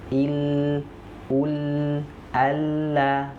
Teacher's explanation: Jadi akhirnya suaranya itu keluarnya dari pinggir lidah kita sebelah kiri dan kanan. Maka dia disebut dengan sifat inhiraf.